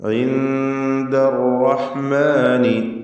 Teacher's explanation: ഇൻദ, ഈ പദത്തിൽ സാക്കിനത്തായ നൂനും ശേഷം ദാലും വന്നത് ഇഖ്ഫാ ഹഖീഖി നൽകി അവ്യക്തമാക്കി മണിക്കണം. ഇൻദർ റഹ്മാനി, റാ തടിപ്പിച്ച് തഫ്ഖീം ചെയ്ത് ഉച്ചരിക്കുക.